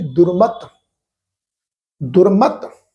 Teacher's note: ਤੱਤੇ ਦੀ ਜਿਹੜੀ ਸਿਹਾਰੀ ਦੀ ਮਾਤਰਾ ਹੈ ਇੱਥੇ ਇਹ ਸਾਇਲੈਂਟ ਰਹਿ ਗਈ ਆ